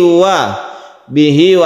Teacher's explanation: mad shilah qasirah panjangnya satu Alif